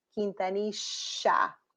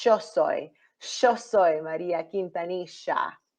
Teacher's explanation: That double L, that y sound changes into sha in some cases. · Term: sh sound